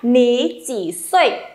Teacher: Vậy nên biến điệu của thanh ba là khi hai thanh ba đứng cạnh nhau thì thanh ba đầu tiên sẽ được đọc thành thanh hai